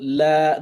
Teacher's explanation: This will be la, because the alif tiny here is on top of the wa. So you pronounce the lam longer because of the alif. So la, not because of the wa.